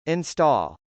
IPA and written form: .ɪnstˈɔːl (install)